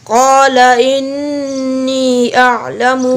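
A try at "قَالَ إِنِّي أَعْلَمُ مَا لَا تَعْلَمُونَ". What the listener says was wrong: पूरा मद पूरी करें। क़ाल इन्नी अअलमु मा ला तअलमून। मद पूरी करें ना, यहाँ पर मद नज़र नहीं आ रही है आपको। रूफ़े मद्दा के बाद हमज़ा आ गया है तो यहाँ पर मद होगी।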